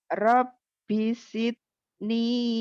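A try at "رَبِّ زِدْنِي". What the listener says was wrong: Bukan si, zi. Rabbi zidni.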